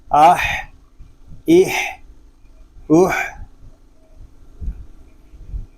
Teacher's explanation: حمزہ ہا زبر آہ، اس کو اح اح اح اس طرح نہیں پڑھیں گے، ہا حلق کے درمیان والے حصے سے ادا ہوگا، اور ہا کو ادا کرتے وقت حلق پر زور دے کر اس کو ادا کریں گے